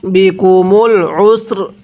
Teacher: এই জায়গার মধ্যে আমরা সিনটা পরিপূর্ণ উচ্চারণ করব, রটা হালকা উচ্চারণ করব।